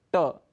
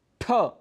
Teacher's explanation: वर्ग का पहला वर्ण है और उसमें कम प्राणवायु लगती है ट बड़ी आसानी से हमने बोल दिया लेकिन ठ बोलने के लिए हमें अधिक प्राण वायु की अधिक वायु की आवश्यकता लगी